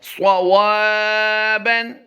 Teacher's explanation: صاد کی ادائیگی پر کرنی ہے، واو کو لمبا کرنا ہے